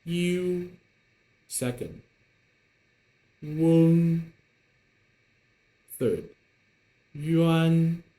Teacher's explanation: the final in the middle, o, an, will sound much stronger because they're main vowels.